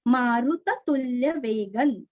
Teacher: ग के ऊपर अनुस्वार का उच्चारण आधा न